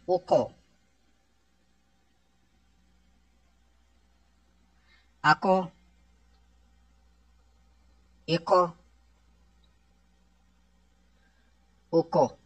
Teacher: حروف کلکلا آ چکا ہے اور مستعلیہ بھی ہے، اس کو موٹا بھی پڑھیں گے اور کلکلا خوب ظاہر بھی کریں گے